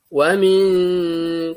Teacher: Wa min, tahan lagi karena ikhfa